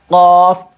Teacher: زبان کی جو آخری کنارہ ہے اس کو اوپر کے تالو کے نرم حصے سے ملا کر نکلتا ہے